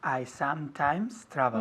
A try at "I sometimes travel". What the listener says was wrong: Muy bien, quiero ver los labios juntos. I sometimes travel, no sometimes. Sometimes, las dos M's. I sometimes travel.